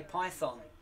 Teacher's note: So many Americans say Python, and they emphasize the thon.